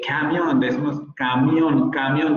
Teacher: ya está muy abierta nuestra A